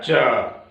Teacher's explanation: च कहां से निकल रहा है, तालु से। च में अ है, कहां से निकल रहा है, कंठ से।